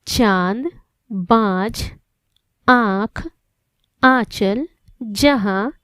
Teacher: अनुनासिक का उच्चारण नासिका तथा मुख दोनों से होता है यानी जब हम अनुनासिक का उच्चार करेंगे तो वायु नाक तथा मुंह दोनों से गुजरती है